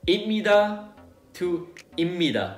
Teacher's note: Just notice that the P underneath 스 turns into 미음, okay? Because of the nasal assimilation.